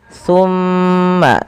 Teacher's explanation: pada lafal summa tahan suara mimnya sepanjang 2 harokat. Summa jangan langsung dilepaskan karena ia ada bacaan gunnah pada lafal bacaan ini.